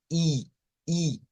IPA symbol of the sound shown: iː